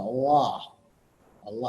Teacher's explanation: The dark L is almost a swallowed sound.